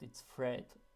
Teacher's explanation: you lengthen and emphasize the sound to make it clear that you're not talking about red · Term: lengthening